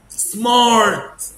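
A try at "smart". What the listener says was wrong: سمارت. اوعى تقول سمارت وبار. مش عايز الار دي. عايز كده. بار الار.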